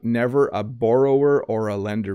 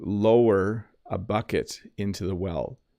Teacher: so you kind of roll the r right into the vowel